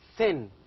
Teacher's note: these are sounds formed with the tongue tip behind the upper front teeth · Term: dentals